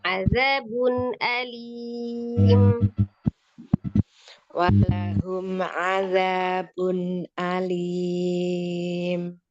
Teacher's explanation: dibedakan azabun itu kan ain, kemudian alimnya jelas hamzah ya